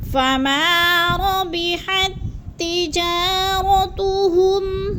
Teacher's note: ہا کو تا مشدد کے ساتھ ملا کر پڑھیں گے، درمیان والا تا ساکن نہیں پڑھا جائے گا۔ تجا کو تھوڑا سا لمبا کرنا ہے، الف مدہ ہے۔